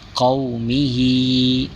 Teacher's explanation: حرف مدہ، واو ساکن سے پہلے حرف زبر، حرف لین کو بغیر کھینچے، بغیر جھٹکا دیے نرمی سے معروف پڑھتے ہیں۔